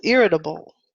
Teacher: you can say it fast irritable that would be fast so the T sound turns into a D sound